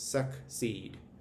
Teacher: that double e is making a long e sound meaning that that last syllable is going to be accented